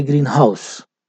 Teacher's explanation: this stress is on the house